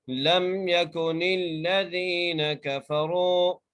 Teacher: نون کو لام سے ملا کر پڑھنا ہے کیونکہ لام کے اوپر تشدید ہے